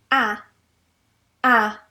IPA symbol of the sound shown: æ